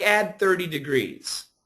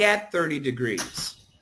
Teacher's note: hear the difference between ADD and at because of our rule the D and the T and the th would be combined